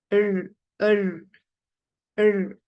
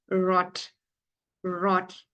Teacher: we call it as uvular sound, which is produced at the back of your throat